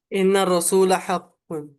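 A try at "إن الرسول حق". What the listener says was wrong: हाँ माशाल्लाह, इन्ना रसूल हक़्क़ुन,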